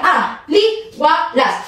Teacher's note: Nakikita niyo ang pantig na A, li, wa, las. So magkahiwalay ang patinig na I at ang malapatinig na W. So hindi siya matatawag na diptongo dahil kung pagpapantigin mo ang salitang aliwalas ay magkahiwalay ang I at ang W.